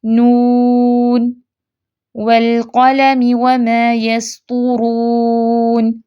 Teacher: اب اس کو بھی پڑھنے کے 2 طریقے ہیں، ایک وقفاً جب ہم پڑھتے ہیں تو نون، یہ جب رکیں گے تو مد کریں گے، پھر سانس لے کے آیت کا اگلا حصہ پڑھیں گے، جیسے نون والقلم وما یسطرون، تو پہلے وقف کیا تو نون پہ مد کی، پھر اگلا حصہ پڑھا